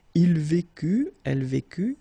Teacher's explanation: final T not pronounced. So basically you've got only one form here and it's vécu for all these three persons.